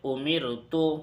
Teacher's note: امرت میں را کو باریک پڑھیں گے کیونکہ رائے ساکنہ سے پہلے میم کے نیچے زیر ہے، اور اس کے اندر تینوں شرطیں پائی جا رہی ہے، یعنی یہ زیر اصلی بھی ہے، عارضی نہیں ہے، یعنی یہ کسی بھی حالت میں زیر بدلنے والا نہیں ہے۔